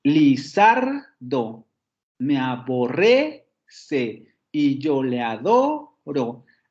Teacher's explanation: aquí el primero acento aparece en la segunda sílaba